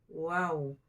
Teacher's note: Antara dua bibir tersebut keluar daripadanya huruf wow. Berarti bukan dipertemukan, dia di antara saja. Wow. Kalau dipertemukan bau jadinya huruf ba.